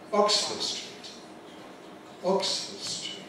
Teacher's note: that's a compound noun following the regular rule where Oxford is the strong element, street is the weak element.